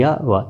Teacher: य, व का उच्चारण बिना किसी अवयव के संघर्ष या स्पर्श से हो रहा है, बिना घर्षण के हो रहा है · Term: अर्धस्वर